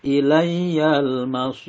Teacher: masir ini mad arid li sukun dibaca panjang boleh 2, 4 atau 6. Kemudian ro-nya ini dibaca tarkik atau tipis karena ro-nya kalau wakof berarti ro-nya itu mati sukun dan sebelumnya berharokat ada ya sukun atau panjang dan sebelumnya berharokat kasroh.